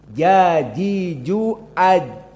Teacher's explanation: Jim jahr dan syiddah tidak ada nafas yang keluar tidak ada suara yang keluar